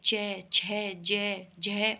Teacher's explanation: तालव्य होते हैं जो तालू से बोले जाते हैं